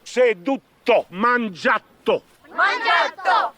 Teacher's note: Questi non riescono a dire le parole normali, le raddoppiano tutte.